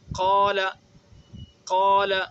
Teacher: الف مفخمہ، یعنی وہ الف جو پر پڑھا جاتا ہے، جیسے قال، یہ الف مفخمہ، ایسا الف جو پر پڑھا جاتا ہے · ایک تو ہم نے پڑھ دیا قاف کو تو پر کیا، اور قاف کو پڑھنے کے بعد آواز کو پھیلا دی منہ میں